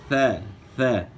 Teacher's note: ثا کی ادائیگی میں زبان کی نوک سامنے والے اوپر کے 2 دانت سرائے علیہ کے اندرونی کنارے کے ساتھ زبان کی نوک لگے گی. تو ثا پڑھنا ہے، ثا ثا.